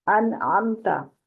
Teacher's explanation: عین جو ہے وہ وسط حلق سے ہے